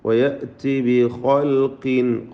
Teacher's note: വയഅതി ബിഖൽഖിൻ, ഖൽഖ് ഖാഇന് പൂർണ്ണമായ തഫ്ഖീമാണ്, ഖാഫിന് ഏറ്റവും കുറഞ്ഞ തഫ്ഖീം കസ്റായതുകൊണ്ട് ബിഖൽഖിൻ ജദീദ്, തൻവീനിനെ ഇഖ്ഫാ ഹഖീഖി നൽകി മറച്ചു മണിച്ചോതുക.